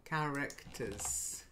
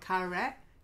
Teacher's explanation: So you've got two schwas.